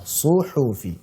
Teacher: Untuk shad dan ha ini dhammah berjejer. Nah, kalau dhammah itu harus monyong.